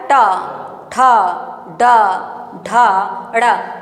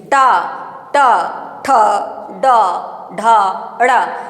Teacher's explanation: ट बोलिए देखिए जीभ तुरंत राउंड लेती है। पीछे की तरफ घूमती है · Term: मूर्धा